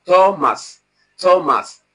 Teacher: the sound we have in Thomas is not dental sound, it is the alveolar sound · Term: voiceless alveolar sound